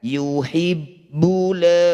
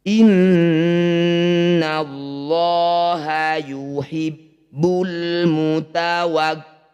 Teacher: diikuti lam sukun disebut bacaan izhar Qariah atau alif lam qamariah cara bacanya bunyi lam sukun ini baca dengan jelas jangan diseret